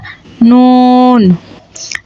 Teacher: জিহ্বার আগা তার বরাবর উপরের তালুর সঙ্গে লাগাইয়া নুন